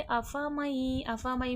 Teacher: अफ़मई में हो रहा है इदग़ाम मअल गुन्ना, नून साकिन के बाद हुर्फ़े यरमलून का या आ गया है। इदग़ाम मअल गुन्ना होगा, यानी कि दो लफ्ज़ आपस में मिलेंगे गुन्ना के साथ।